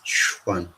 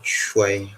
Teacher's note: So we have the labial form of the cha sound